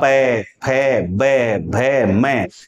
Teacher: प वर्ग का उच्चारण करते हैं तो पहले हमारे दोनों होठ आपस में मिल जाते हैं